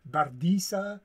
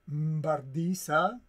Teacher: Other mutations occur with the B, follows goidelic barcos with the initial M, you know, it's a nasalized, the B becomes nasalized, and then we find an initial M before the B